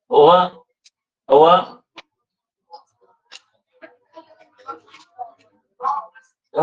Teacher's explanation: ओठांचा व ओठ एकमेकांना जुळत आहेत आणि जीभ थोडी दाताच्या मध्ये येते म्हणून दंत्योष्ठ